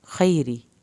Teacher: را کے نیچے زیر ہے، را پتلا پڑا جائے گا